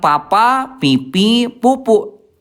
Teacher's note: Nah, Bu hati-hati yang sering terjadi huruf fa itu yang disentuhkannya itu bibir atas sama bibir bawah. Jadi suaranya jadi pa. Nah, itu munas salah.